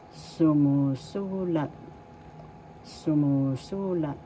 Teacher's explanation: First syllable su, second syllable mu, third syllable su, and fourth syllable lat. The accent is in the third syllable, so you pronounce this or bigkas, sumusulat.